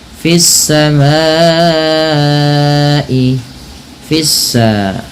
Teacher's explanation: Kemudian pada lafal fis samai, fissa, nah di sini ada alif lam, kita kenal dengan namanya alif lam syamsiyah, alif lam syamsiyah yaitu alif lam yang tertulis dan kemudian diidghamkan kepada huruf setelahnya, yaitu huruf sin, sehingga sinnya berharakat tasdid.